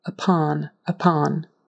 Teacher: syllable stress on the second syllable and it's a short o.